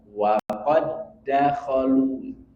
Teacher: huruf Dal pertama bersukun tidak dibaca karena diidgamkan dimasukkan ke huruf Dal yang kedua sehingga tidak perlu kita mengqolqolahkan huruf Dal yang pertama waq perlu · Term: idgam mutamilain